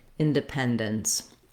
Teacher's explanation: So the word independence has a lot of syllables. It's important to know which syllable is going to be longer, the stressed syllable. That's the pen syllable. So I've written that here with capital letters.